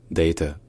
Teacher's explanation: c'est un A qui est long et c'est un A qui est en arrière de la bouche